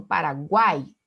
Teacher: Obrigatoriamente vai aparecer na sequência semivogal vogal semivogal ou três sons vocálicos · Semivogal, vogal, mais semivogal. Quando eu digo Paraguai, eu tenho a junção do U, do A e do I. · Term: tritongo